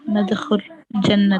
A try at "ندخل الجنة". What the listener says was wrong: make it ندخل and connect it with al-jannah.